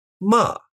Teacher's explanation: the fourth tone starts high and falls all the way down